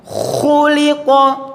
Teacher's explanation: betul-betul tebal dan nampak betul, ngoroknya juga nampak